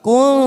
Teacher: nun sukun bertemu tak, namanya ikfa aqrab, samarkan bunyi nun sukun